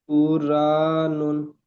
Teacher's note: র সাকিনে পূর্বে পেশ এসেছে, তাই র কে পুর করে র পড়তে হবে।